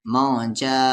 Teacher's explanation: مد کے سمبل کے بعد حمزہ ہے تو 3 سے 4 الف کے برابر